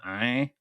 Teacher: les voyelles nasales comme «in» deviennent encore plus nasales